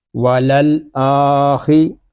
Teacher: خا یہ حروف مستعلیہ میں سے ہے، اس کو پر پڑھیں گے